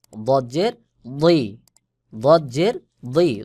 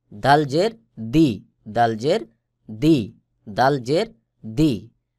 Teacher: দদের আওয়াজ আর দালের আওয়াজ পার্থক্য হলো দদের আওয়াজটা মোটা করে গোল মতো হয়ে উচ্চারণ হবে, দাল স্বাভাবিকভাবে উচ্চারণ হয়